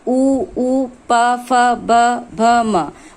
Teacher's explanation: ओष्ठ उ प फ ब भ म। हम इन वर्णों का उच्चारण कर रहे हैं तो ये हमारे ओष्ठ को स्पर्श कर रहे हैं